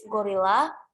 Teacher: After the go, there is a apostrophe. So then the intonation will be higher in the second syllable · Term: stressed syllable